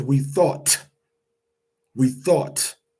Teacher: It ends with a t. But very rarely do you hear the t.